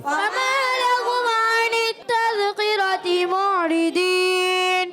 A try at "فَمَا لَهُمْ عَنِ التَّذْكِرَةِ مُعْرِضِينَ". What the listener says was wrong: کاف موٹا محسوس ہوا, کاف بھی باریک, دال بھی, را پر زبر ہے, اس کو موٹا کرنا ہے.